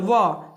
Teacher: व बोल के देखिए, अगर जब हम व बोलेंगे ना, व, तो इसका उच्चारण स्थान हो जाएगा व, यानी कि दांत और ओठ दोनों इसमें बोलने में सहायता कर रहा है, तो ये हो जाएगा दंतोष्ठ।